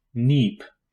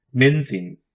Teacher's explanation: It is a coronal nasal. Like L, it is usually more dental than alveolar. It is pronounced like the N in no one.